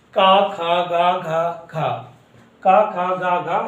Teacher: इनका उच्चारण कंठ से होता है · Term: कंठ वर्ग